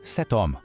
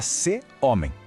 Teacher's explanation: Aquele T no final de set parece que nem existe, mas ele ressurge para se conectar suavemente com o som do O de homme. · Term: liaison